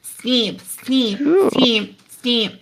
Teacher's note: what you can hear is that e e starts to get some nasalization